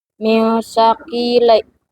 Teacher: nun mati dibaca samar dengan gunah karena bertemu huruf sa. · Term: ikfa